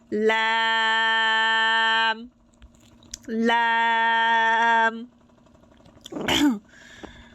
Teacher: জিহ্বার আগাটা সামনের ওপরের 8টা দাঁতের গোড়ার সাথে লেগে উচ্চারিত হবে লাম লাম